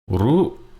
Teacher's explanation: First half of the word is high tone. Second half of the word is low tone, right? So, rujak.